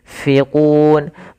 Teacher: Ini usahakan disamarkan nunnya kepada huruf fa. Makhraj fa ada bibir gigi atas menempel dengan bawah